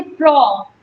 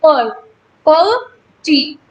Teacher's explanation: Stressed होता है। Stressed means हमें यहाँ पे ग्रेटर आर्टिकुलेटरी एफर्ट चाहिए, हमें बहुत ज्यादा जोर लगाना पड़ रहा है प्रो बोलने में, तो ये हो जाएगा स्ट्रेस्ड सिलेबल।